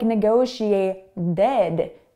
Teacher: North American English speakers love to change T's. So that T sound is between two vowel sounds, and therefore it sounds like a D.